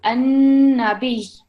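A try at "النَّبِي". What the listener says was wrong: Not B, because then it would become a letter of prolongation. We're not prolonging it, we're just making sure that we have the emphasis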